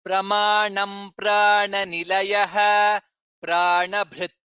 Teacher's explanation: note pranabhrit, bha is mahaprana